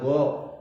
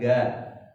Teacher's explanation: Kemudian go ya, itu huruf al-isti'la juga itu harus tebal sehingga bacanya go, bukan ga. Gasikin, gasiqin, tapi go siqin.